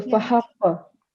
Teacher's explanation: because qaf is a qalqala letter, that's why we're going to give a bit of jerk.